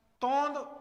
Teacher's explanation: तो ध्वनि नाक प्लस गले दोनों से आ रही है इसीलिए यहां पर यह जो बिंदी है यह बिंदी ना होकर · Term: चंद्र बिंदु